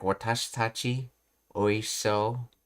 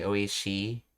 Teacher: they essentially make the sound as short as possible if there's no I after the she